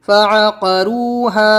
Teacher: فا زبر فا، عین زبر ع، فع، قاف زبر قا، فعق، را واو پیش رو، فعقروا، ہا الف زبر ہا، فعقروہا۔ اس میں فعقا جلدی پڑھنا ہے، روحا حروف مدہ کھینچنا ہے